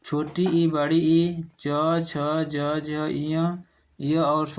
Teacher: ये सब तालु से उच्चरित होते हैं